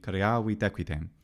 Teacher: the T naturally gets taken onto the next vowel beautifully